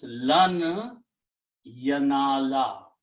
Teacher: Also in the tajweed, when noon and ya come together, then the sound of noon becomes noon ghunna, idgham, and then you put a shadda here and pronounce this ya and noon with the idgham.